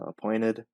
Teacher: So appointed, I changed the T to a D